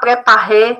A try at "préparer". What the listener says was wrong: Agora, préparer, faltou aquele R francês.